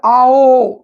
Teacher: इसे बोलने में द्विमात्रिक से ज्यादा समय लगता है, इसीलिए इसे प्लुत स्वर बोलते हैं